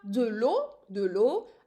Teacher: I'm using here three letters, but I'm just pronouncing it as if it's in one syllable